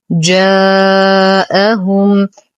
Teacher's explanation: لدينا حرف مد وبعده همز بنفس الكلمة، المد واجب متصل يمد بمقدار 4 إلى 5 حركات